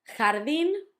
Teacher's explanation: had the accent at the end and it also had the h sound, ja, although h, the J always sounds h.